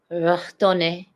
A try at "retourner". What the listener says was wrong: Or don't try the R that hard. How would you say it? No, like don't try so hard on the R. It's at least it's the right accent at the end, I would say. Retourner.